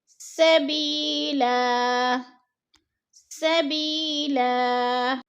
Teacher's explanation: اگلا لفظ ہے سبیلا، ادھر یا ساکن سے پہلے با کے نیچے زیر ہے تو یا مدہ ہو رہا ہے، یا مدہ کو ہم نے ایک الف دو حرکات کے برابر کھینچ کر پڑھنا ہے۔